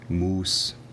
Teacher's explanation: possibly having a more retracted s in protog Germanic moose and a less retracted s in Old English moose